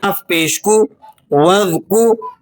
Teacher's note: وَاذْكُرِ اسْمَ، واو کو آپ نے ذال سے ملانا ہے، واو ذال زبر وذ، الف کو بیچ میں سے سائلنٹ کر دیں گے